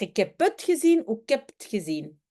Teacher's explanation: le ik devient k, le het, t, le heb, eb.